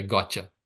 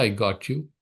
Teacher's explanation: You don't say I got you. The t sound, got, and then ya comes, the t becomes ch.